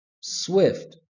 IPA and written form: swɪft (Swift)